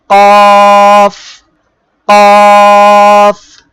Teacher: জিহ্বার গোড়া তার বরাবর উপরে তালুর সঙ্গে লাগিয়ে 2 নোক্তাওয়ালা কফ। জিহ্বার গোড়া এই উপরে তালুর সঙ্গে আমরা লাগাবো, লাগানোর পরে উচ্চারণ করব।